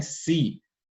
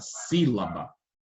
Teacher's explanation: tem o si aqui que é pronunciado com maior intensidade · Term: sílaba tônica